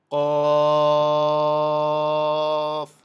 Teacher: জিহ্বার গোড়া তার বরাবর উপরে তালুতে লাগাইয়া শক্ত করে বলতে হয়